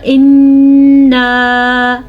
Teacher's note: یہ مد 2 سیکنڈ تک لمبی کی جانے والی مد ہے